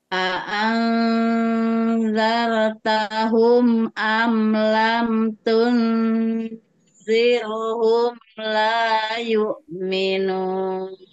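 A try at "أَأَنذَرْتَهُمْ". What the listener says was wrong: Ini kalau zarnya tebal. Zar. Zartahum.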